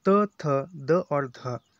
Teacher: तो दंते या दंते व्यंजन यानी अपनी जीवा जो है उच्चारण करते समय जीवा दांतों को स्पर्श करती है या दांतों को टच करती है